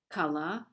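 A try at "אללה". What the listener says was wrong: Allah, right? You're adding the first letter. The first letter is an Arabic prefix. But the word is Allah.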